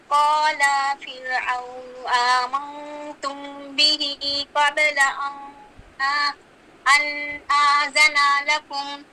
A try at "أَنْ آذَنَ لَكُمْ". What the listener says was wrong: آذن لکم، آذنا نہیں، آذن لکم، لمکرم مکرتموہ، یہ دیکھیں جو کاف ہے نا، ہاں پہلا کاف ساکن ہے، دوسرے کاف پہ جو مکر ہے اس میں کاف پہ فتحہ ہے، جی پڑھیے۔